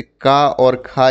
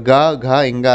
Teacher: जिन हमारे वर्णों के उच्चारण में कंपन ज़्यादा उत्पन्न होता है स्वर यंत्र में, तो वो सघोष कहलाते हैं।